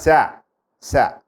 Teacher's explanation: శా శా అన్నప్పుడు ఈ తాళవ్యాలు ఇలా సాగదీసి మధ్యలోంచి గాలి వదులుతాం, అప్పుడు శా శబ్దం వస్తుంది. సా అంటే దంతాల్లో నుంచి, షా అంటే మూర్ధన్యలో నుంచి.